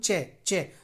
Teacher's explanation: दोस्तों अगर मैं बोलूं च च तो च जो है हमारा हमारी जो जीव है वो तालू को टच कर रही है